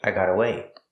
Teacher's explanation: The T in got is a fast T because it's between vowels.